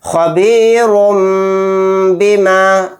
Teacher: را کے اوپر دو پیش ہیں یعنی تنوین، تنوین کے بعد با آ گیا تو یہاں پر بھی اقلاب کا قاعدہ ہوگا، را کو میم کے ساتھ ملا کر غنہ کے ساتھ پڑھیں گے